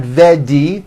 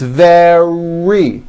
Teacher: the R occurs in the middle of the word it's not a D sound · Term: R in the middle